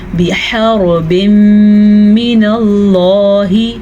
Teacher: اب اور دوسری چیز را کو پور پڑھنا ہے کیونکہ اگر را پہ زبر یا پیش ہو تو را پور پڑی جاتی ہے، لیکن اگر را ساکن ہو تو پیچھے والے حرف پہ اگر زبر یا پیش ہوگی تو را پھر پور پڑی جائے گی. پور کا مطلب ہے ہم را کو موٹا کر کے پڑھیں گے · لفظ اللہ کو پور پڑا کیونکہ لفظ اللہ سے پیچھے زبر ہے